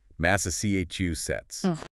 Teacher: Four syllables with the stress on the third.